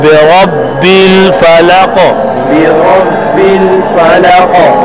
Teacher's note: را پر جب زبر آ جائے تو آپ نے پڑھا کہ موٹا ہوگا. قاف کے اوپر قلقلہ بھی ہے اور قاف موٹا بھی ہے. برب الفلق.